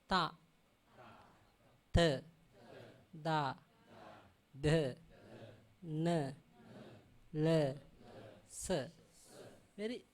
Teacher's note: Now the tongue going to touch teeth only, not go up.